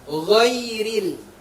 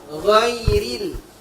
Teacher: Tarkik. Jadi bunyinya bunyi i, bukan bunyi e. Ghairil, berarti ghairi.